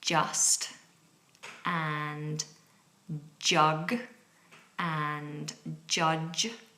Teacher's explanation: A J sound is Part plosive D and part fricative Z